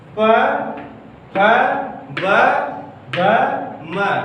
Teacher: इसका उच्चारण करते समय हमारा ओष्ठ जो है दोनों ओष्ठ आपस में टकराते हैं, इसीलिए इसे दोस्तों ओष्ठ व्यंजन कहते हैं।